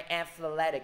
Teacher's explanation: Nhấn vô âm tiết thứ hai